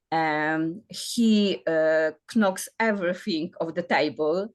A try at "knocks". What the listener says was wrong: it's a silent K. But it's a silent K. So it sounds to me like that, knocks. There's no K sound. Anything KN at the start, it's always silent.